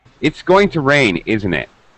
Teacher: my pitch falls at the end on the tag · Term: falling intonation